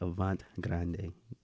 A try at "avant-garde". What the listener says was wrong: no, you're mixing letters. Yeah, and you just put the R before the A.